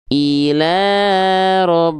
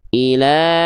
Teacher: huruf ba yang pertama ini ya ditekan enggak perlu dipantulkan